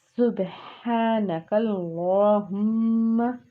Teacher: سین جو ہم نے پڑھا اس میں وہ سیٹی والا حرف ہے، یعنی کہ حرف صفیریہ ہے، تو اس میں سیٹی نمایاں آپ کو فیل ہونی چاہیے پڑھتے ہوئے۔